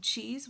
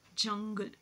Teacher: a sudden release of air next we have the africat wherein there is complete closure and slow release · wherein there is complete closure and slow release so we see there is a blockage of Air Stream in the oral cavity and then there's a slow release of air